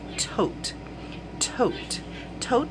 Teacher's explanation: the letter T at the end of the word will be soft and unreleased and as compared to T's at the beginning of words · Tote sounds stronger at the beginning than at the end, that T sound. And it should be unreleased and ready to go into the next word.